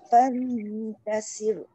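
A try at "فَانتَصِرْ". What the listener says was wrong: Sok tebalkan. Rod dah betul nipis. Fantasir. Tasir. Dia tak boleh sengih. Sok tak boleh sengih walaupun dia balik bawah. Sir.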